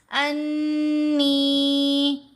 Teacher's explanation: نون کے اوپر ہم غنہ بھی کریں گے اور نون کے اوپر نون کی آواز کو لمبا بھی کریں گے